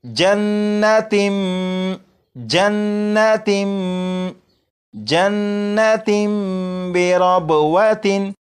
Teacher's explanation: جب تنوین کے بعد با آ جائے تو تنوین کے اندر جو نون ساکن کی آواز ہوتی ہے اسے میم سے بدل کر غنہ کر کے پڑھیں گے، جیسے یہاں پر لکھا ہے تن، اسے پڑھیں گے تم۔